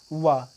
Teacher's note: दंतोष्ठ, दंतोष्ठ व्यंजन है वा, इम्पॉर्टेंट है। वा शब्द जो है यह दंतोष्ठ व्यंजन है